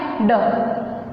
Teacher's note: ड को जब उच्चारित करेंगे तो हमारे स्वर तंत्रियों में क्या होता है, कंपन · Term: सघोष